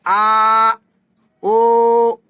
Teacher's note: विवत स्वर, मुख द्वार पूरी तरह खुला जाता है